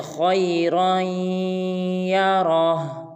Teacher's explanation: را کے بعد الف آ رہا ہے، اس الف کو نہیں پڑھیں گے بلکہ را کو یا مشدد کے ساتھ ملائیں گے۔ اس میں خا اور را اور جو آخر میں را آ رہا ہے، ان تینوں کو پر ادا کرنا ہے